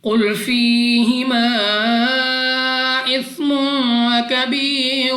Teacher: قاف مستعلیہ میں سے ہے، موٹا پڑھنا ہے، منہ اور آواز کو کھول کر